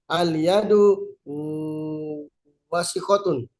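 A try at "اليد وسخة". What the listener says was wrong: Betul.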